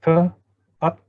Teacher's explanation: Atta, the T, when you say T, at, the tongue, the tip of the tongue touches the back of the upper row of teeth. That's called dental.